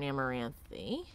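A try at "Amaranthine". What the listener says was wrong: I like how you say Amaranthi instead of Amaranthin.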